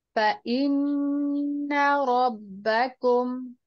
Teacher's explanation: غنہ کرنا ہے نون مشدد کے اوپر، لیکن اس کی زبر کو آپ نے نہیں بڑھانا.